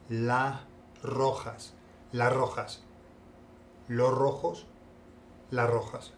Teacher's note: le quitan la s de los o las